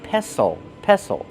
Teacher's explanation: The T is silent. Don't pronounce the T.